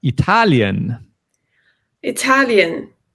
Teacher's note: the stress here is really on the second syllable